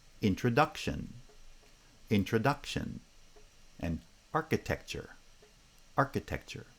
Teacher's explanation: foot and architecture has primary stress on the first foot but within each bisyllabic foot the first syllable has stress the second syllable does not